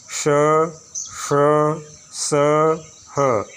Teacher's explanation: संघर्षी से कहते हैं क्योंकि इसमें वायु में ऊष्मा पैदा होती, वायु रगड़ती है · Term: ऊष्म संघर्षी